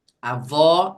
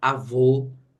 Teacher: avó som aberto avô som fechado Essa é a diferença dos dois mas ambos marcam sílaba forte